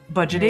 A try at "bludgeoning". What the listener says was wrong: Bludgeoning with an L.